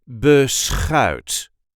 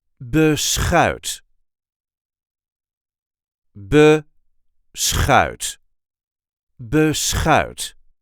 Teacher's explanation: There is a light emphasis on the last part of the word.